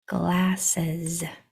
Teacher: G, L, A, S, E, Z. And there's that S making that vibrating sound